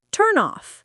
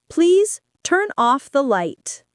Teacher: We connect the N from turn to the O from off. It becomes turn off.